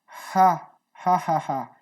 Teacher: Não se tem um som específico, mas ela é uma consoante glotal, que se chama, que ela é do fundo da garganta, bem levinha